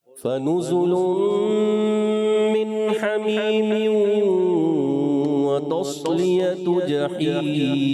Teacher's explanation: من حمیم میم تو ایک الف کھینچیں گے، زیادہ نہیں